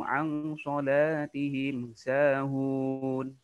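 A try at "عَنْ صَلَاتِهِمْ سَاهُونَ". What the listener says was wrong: Anso ditahan lebih lama, dia ikhfa. Diulang.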